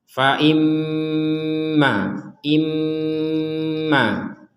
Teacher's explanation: Nun bertasdid kedudukannya sama dengan mim bertasdid sama-sama didengungkan